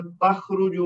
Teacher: را کے اوپر پیش ہے تو وہ موٹی پڑی جائے گی